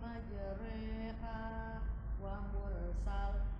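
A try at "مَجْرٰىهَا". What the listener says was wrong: di majrinya itu bukan bukan tafhim lagi nggih karena kan condongnya ke ro nggih ke kasrah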